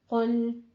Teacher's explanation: قل قوف پر ہوتے ہوئے آگے لام باریک ہو جائے گا